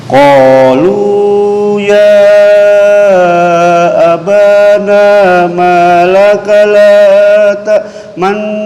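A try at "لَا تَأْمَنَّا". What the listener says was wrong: Sebentar, kurang maju bibirnya. La ta'manna, la ta'manna.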